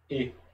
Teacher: tsere, representa a vogal E, um E fechado. Você vai pronunciar isso daqui, E.